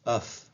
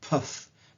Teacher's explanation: Do you feel like a little explosion of air there? Well, that's an aspiration.